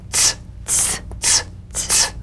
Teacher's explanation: Use a crisp, light staccato treatment. Feel a crisp, percussive hiss between the tip of the tongue and the teeth.